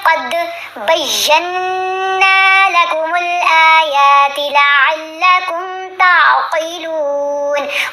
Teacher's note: قاف کو موٹا پڑھیں گے، لام کو لمبا تھوڑا سا کریں گے. یہاں غنہ کیا جائے گا نون کے اوپر.